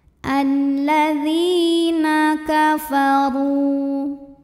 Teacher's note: karena ada ya sukun yang didahului baris kasrah, maka huruf dzal kita panjangkan dua harokat.